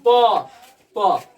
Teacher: जितना भी प वर्ग है उसका उच्चारण ओठ से होता है